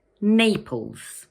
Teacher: It has two syllables, Naples, and the first one is stressed.